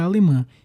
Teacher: alemã, que é uma oxítona com vogal nasal formada por o a e o tio.